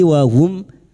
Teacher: Mim sukun dibaca jelas tanpa mendengung. Bertemunya mim sukun dengan huruf hijaiyah selain mim dan ba. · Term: izhar Syafawi